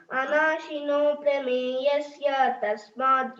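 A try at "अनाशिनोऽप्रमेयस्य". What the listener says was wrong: అనాశినో ప్రమేయస్య అన్నట్టు ఉండకూడదు. అనాశినో ప్రమేయస్య. ప్రా కింద స్ట్రెస్ ఇవ్వు. ఆ రెండు సంధి ఉంది అని చెప్పు కదా. అనాశినో ప్రమేయస్య చెప్పు.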